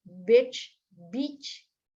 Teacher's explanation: emang lebih panjang cuman nggak terlalu dipanjangin juga pada kata beach